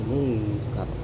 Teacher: menyamarkan bunyi nun mati ke dalam huruf setelahnya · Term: ikhfa hakiki